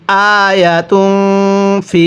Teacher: তানভিনের পরে যদি এরকম ফা ইকফার হরফ থাকে তাহলে তানভিনটিকে গুন্নাহ করে পড়তে হয়। আয়াতুং, ফায়াজের ফি, এক আলিফ টান দিব, জেরের পরে ইয়া সাকিন, এক আলিফ টানতে হয়।